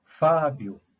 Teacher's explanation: a sílaba tônica é fa portanto uma paroxítona lá Como terminou e com ditongo eu vamos